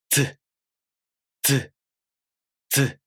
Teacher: So affricate consonants are made up of 2 different consonant sounds, a stop and a fricative. With the z sound, you first make the d stop sound. Then you quickly make the z fricative sound. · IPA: [dz]